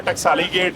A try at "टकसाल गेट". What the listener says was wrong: टकसाली नहीं कहते थे, टकसाल गेट। टकसाल गेट। टकसाल ही नहीं कहते।